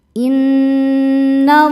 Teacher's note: lam jalalah dibaca tafkhim karena sebelumnya berharakat fathah. Cara bacanya lam dibaca tebal.